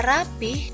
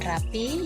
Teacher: yang bagus adalah rapi karena rapih masih terpengaruh pelafalan bahasa Sunda